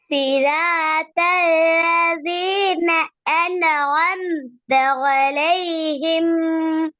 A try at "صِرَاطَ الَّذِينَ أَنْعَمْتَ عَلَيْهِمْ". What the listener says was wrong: அன்னு ஆம்த என்று ஓதக்கூடாதுன்னு சொல்லி நான் சொன்னேன். அன்அம்த. அன்அம்த. ஆ, சரியா ஓதுங்க. திருப்பி அப்படிதான் வருது.